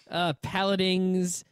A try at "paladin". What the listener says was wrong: You added letters. You can't add letters. There's no ing. There's no in the end. You could say paladin.